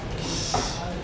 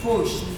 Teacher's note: If I have push, the end sound is sh, and it is voiceless.